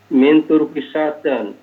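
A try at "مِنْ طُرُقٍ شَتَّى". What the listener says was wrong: Min turukin syattan. Syatta. Syatta. Enggak pakai tanwin. Kenapa ya enggak pakai tanwin? Bukan, kita cari dulu itu syatta kenapa enggak boleh pakai tanwin. Syatta.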